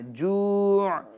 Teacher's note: جو یہ حمزہ والی آواز نہ ہے، جوع عین کی آواز آئے گی